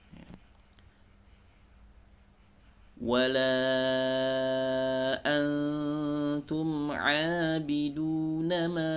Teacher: ditahan suara dari rongga hidung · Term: ghunnah